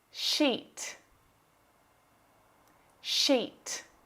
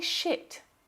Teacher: It uses the long vowel sound, but if you accidentally use the short vowel sound, you'll say shit.